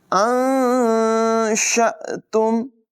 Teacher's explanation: نون ساکن کی آواز کو ناک میں چھپا کر ادا کریں گے، ظاہر نہیں کریں گے. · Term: اخفا